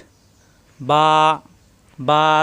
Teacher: দুই ঠোট থেকে উচ্চারণ মিলানো ঠোট ছেড়ে দিলেই হয়ে যাবে বা